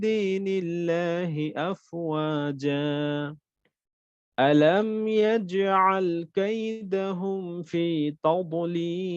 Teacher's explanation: শব্দের মাঝখানের কলকলা ছিল, যার কারণে কলকলাটা আমার খুব উঁচু আওয়াজে হয় নাই, অর্থাৎ খুব বড় আকারে হয় নাই, নরমাল কলকলা হয়েছে, বাট নরমাল।